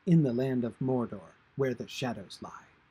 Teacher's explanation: In the land of Mordor, where the shadows lie, lines are trochaic. That is, the beat pattern is stressed, unstressed, stressed, unstressed.